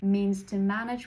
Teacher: means would be slightly devoiced before to but not that much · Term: devoiced consonants